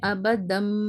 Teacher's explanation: ہلکے ہونٹ کھلے رہیں گے اور آواز نیزل پیسج سے آئے گی. غننے کے ساتھ پڑھیں گے، آواز کو روک کر پڑھیں گے. · 2 زبر کو ہٹا کر میم ساکن سے بدل کر پڑھ رہے ہیں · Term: اقلاب